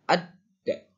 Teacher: Ada dibacanya jadi ada tekanan dan ditahan. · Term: tasydid